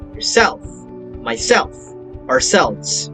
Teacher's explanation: intensive reflexive pronouns receive stronger stress on the second syllable